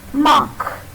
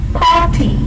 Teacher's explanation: But k is a consonant sound. The r sound is never pronounced before a consonant.